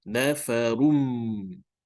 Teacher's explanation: we have to read with the nafarum, with the mim sound at the back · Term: idgham bil gunnah